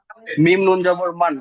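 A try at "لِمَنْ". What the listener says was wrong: একটু টান দিন, মিম নুন জবর মান, সেই টানটা আনুন। মিম নুন জবর মান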